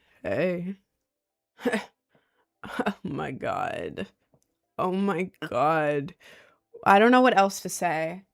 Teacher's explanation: that really low scratchy voice that you force the vocal fry